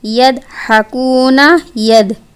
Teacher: یعنی یہ ضاد جو ہے یہ دال بن جائے گا